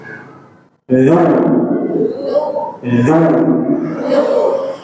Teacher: ujung lidah menempel ujung gigi seri atas. Jadi boleh nampak ya, boleh nampak sedikit.